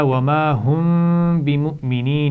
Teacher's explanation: میم کے بعد با رہا ہے تو یہاں پر بھی غنہ ہوگا